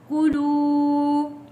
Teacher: واو ساکن سے پہلے پیش ہے، حروف مدہ ہے، ایک الف کے برابر کھینچ کر پڑھیں گے